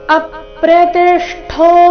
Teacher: ಇಲ್ಲಿ ಅ ಮೇಲೆ ಆಘಾತ ತಿ ಮೇಲೆ ಆಘಾತ ಠೋ ನಲ್ಲಿ ಅರ್ಧ ಷ ಪೂರ್ತಿ ಠೋ ಮಹಾಪ್ರಾಣ ದೀರ್ಘ ಚೆನ್ನಾಗಿ ಕೇಳಿಸಬೇಕು